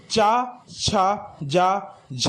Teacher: स्पर्श संघर्षीय व्यंजन चा, छा, जा, झा हैं